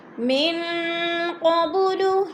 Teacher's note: نون ساکن کے بعد قوف آ گیا تو ادھر اخفا ہو رہا ہے، آواز کو ناک میں چھپا کر پڑھیں گے۔ قب، با ساکن حروف قلقلہ میں سے ہے تو قلقلہ کریں گے۔